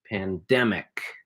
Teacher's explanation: So the stress is in the middle of the word here. Pandemic. Has 3 syllables.